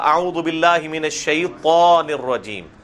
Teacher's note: یہ شیطان نہیں ہے بلکہ شیطان، تا کو آپ نے تا کو موٹا کر کے پڑھنا ہے